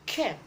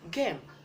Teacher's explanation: But the difference is, in the K sound, you make a voiceless sound. In G sound, you make a voice sound.